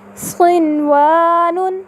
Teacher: آپ نے دیکھا ان چاروں مثالوں میں نون ساکنہ کے بعد اسی کلمے میں حرف یا واو آئے تو ہم نے نون ساکنہ کو اس کے مخرج اور صفات کے ساتھ ظاہر کر کے پڑھا۔ اس قاعدے کو تجوید کی اصطلاح میں اظہار مطلق کہا جاتا ہے۔